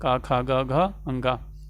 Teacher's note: इनका उच्चारण कंठ से होता है, इसलिए इनको कंठ्य कहा जाता है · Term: कंठ्य व्यंजन